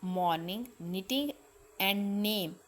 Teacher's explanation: The words morning, knitting and name begin and end with nasal sounds.